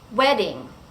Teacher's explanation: in the word wedding, we go up and then down because the word stress is on the first syllable.